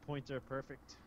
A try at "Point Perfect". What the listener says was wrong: You said Pointer Perfect.